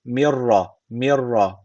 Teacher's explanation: gunnesiz şekilde katıyoruz yani şu ra harfi şeddeli gibi okunuyor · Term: idgam bila gunne